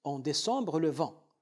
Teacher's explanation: Nous avons décembre, nous avons un E terminal d'un mot, placé devant un mot à initiale consonnatique. Donc ici, on prononce le E. En décembre, il compte pour une syllabe. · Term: E muet